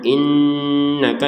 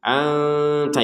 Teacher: Innaka itu dengung. Anta itu samar. Jadi jangan sama-sama didengungkan ya.